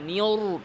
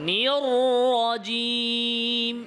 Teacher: রতে আরেকটু আওয়াজ জারি রাখবেন ঠোঁট যেন গোল না হয়